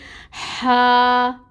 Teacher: الف ساکن سے پہلے فتحہ ہے، الف مد کا رول ہو رہا ہے، 2 حرکت لمبا پڑھیں گے